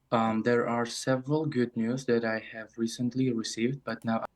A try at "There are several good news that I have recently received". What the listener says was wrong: So we get a bit of intonation that received, but everything else, there's no chunking. All of the words are pronounced separately. It sounds like he's reading.